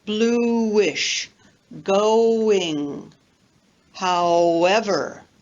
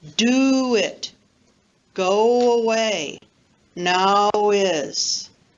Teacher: when we have a back vowel like oo, o, ow, we link with W, both word internally and between words. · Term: linking with W